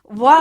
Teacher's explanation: इसमें बिल्कुल एकदम हल्के से टच होता है नीचे का होठ ऊपर से हल्के से टच करता है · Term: दंते ओष्ठ